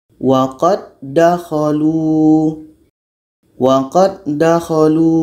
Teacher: sempurnanya kalau da pertama ini masuk kepada da yang kedua jadi sifat da ini yang mati qqalah tidak terdengar lagi waqad dakolu waqadakolu secara hukumnya adalah Dal mati bertemu dan idgham · dan idgham mutamasil lain secara proses membacanya hukumnya adalah idgham Kamil jadi bunyi da pertama masuk kepada da yang kedua